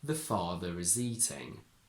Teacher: But if it's followed by is, now the letter R is followed by a pronounced vowel. So in this case, we must pronounce R as a linking R.